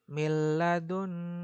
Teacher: Dia langsung masuk. Nunnya nggak dibaca. Dan juga nggak boleh berdengung. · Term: idgham bila gunnah